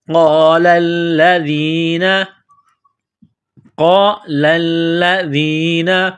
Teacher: قاف کو موٹا کرنا ہے، لام کو دبانا ہے، سختی کرنی ہے، ذال کو نرم کرنا ہے، زبان تھوڑی سی باہر نکالیں گے